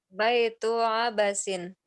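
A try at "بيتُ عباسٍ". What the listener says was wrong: Abbasin. Banyak bukan Abasin tapi Abbasin. Bukan Abasin, bukan. Bukan Abbasin. Ada tasdid. Abbasin.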